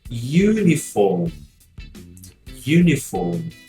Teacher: o fato do R depois de vogal em inglês não sendo pronunciado